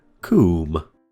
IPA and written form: kuːm (cwm)